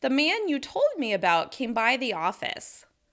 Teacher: I'm stressing the word by and not came in that sentence because that's a phrasal verb